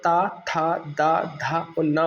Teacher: हमारे ऊपर के जो दांत होते हैं उनसे हमारी जीभ को टकरानी पड़ती है जब यह साउंड निकलता है, इसलिए इन्हें दंताय व्यंजन या दंत व्यंजन कहा जाता है, ता, था, दा, धा और ना को।